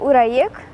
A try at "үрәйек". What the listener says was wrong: Уряик. Уряик заплетем. Звук У надо произносить немного уже. Уряик.